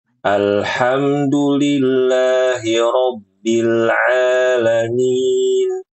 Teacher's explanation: Aanya panjang dua harakat. Harus jelas, Ibu. Jangan sampai saru-saru panjang atau pendek ya.